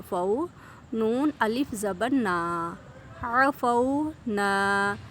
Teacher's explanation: حروف لین آ گیا کیونکہ واو کے اوپر جزم آ گئی، واو ساکن ہو گیا، پیچھے والے حرف پر زبر ہے، ٹھیک ہے، حرکت آ گئی تو یہ واو لین ہے، اس لیے ہم نے اس کو ایک الف کے برابر لمبا کیا ہے۔